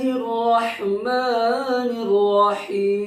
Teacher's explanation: بڑی ہا وسط حلق یعنی حلق کا مڈل حصہ سے، درمیانی حصہ سے نکلتا ہے